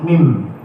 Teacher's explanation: Dua bibir mengatup juga, tapi ada kombinasi dengan rongga hidung mim. Habis di sini, tapi terbuka di hidung mim.